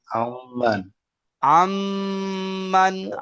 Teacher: নুন সাকিনকে মিমের সাথে মিলিয়ে এক আলিফ পরিমাণ গুন্না করে পড়তে হয়। টান দিয়ে পড়তে হয়।